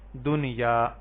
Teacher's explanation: نون ساکن کے بعد یا ہے جو کہ حروف یرملون میں سے ہے، تو یہاں پہ ادغام کی بجائے ہم یہاں پہ اظہار ہی کریں گے